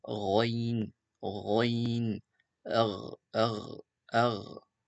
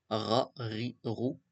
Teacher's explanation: Son point de sortie, c'est le haut de la gorge. Et pareil, c'est une lettre qui est grave.